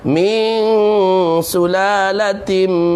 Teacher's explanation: tutup mulut sebab tanwin jumpa dengan mim, idgham bi gunnah